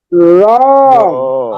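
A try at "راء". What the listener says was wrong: মুখ সম্ভবত গোল হচ্ছে, মুখ গোল হবে না। র র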